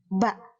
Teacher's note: Ba kita ketahui keluar dari dua bibir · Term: makhraj